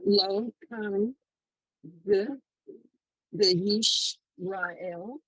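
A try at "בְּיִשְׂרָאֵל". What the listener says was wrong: No, read it What word is that? Look at it. It's a sin, not a shin.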